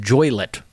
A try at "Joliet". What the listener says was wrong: Joliet? The I is on the other side of the L.